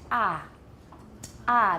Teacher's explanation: that's centrally released because I'm letting my tongue down